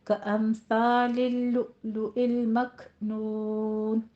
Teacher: کامثال اللؤلؤ المکنون، امثال میں میم ساکن کا قاعدہ اظہار شفی کریں گے، اس کو لمبا نہیں کھینچنا، جلدی پڑھنا ہے. لؤلؤ میں لؤ میں حمزہ پہ جھٹکا دینا ہے، مکنون میں کاف پہ حمز کرنا ہے